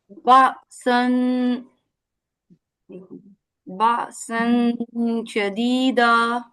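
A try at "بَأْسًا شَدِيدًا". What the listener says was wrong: بہتر. نون کو چھپانا ہے اور چھپائیں.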